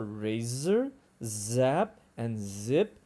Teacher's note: there's the voiced one as in Z as in zip